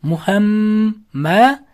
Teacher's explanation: sukunlik mim harfidan so'ng yana bitta mim harf kelib qolsa, ikkita mimni birlashtirib o'qiymiz g'unna bilan. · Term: Idg'om shafaviyya